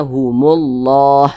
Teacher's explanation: kaidahnya kalau ada lafaz Allah di belakangnya ada tanda baca dah maka lafaz Allahnya dibaca tebal